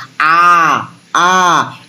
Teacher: সেই জন্য আ হচ্ছে ওপেন সিলেবেল অর্থাৎ ওপেন ভাওয়েল, অর্থাৎ যে মৌলিক স্বরধ্বনি উচ্চারণ করার সময় আমাদের মুখের ফাঁক সব থেকে বেশি থাকে সেটা হচ্ছে বিবৃত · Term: বিবৃত স্বরধ্বনি